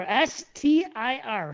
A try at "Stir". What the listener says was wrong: I'm hearing that extra ER at the end. Say it normal.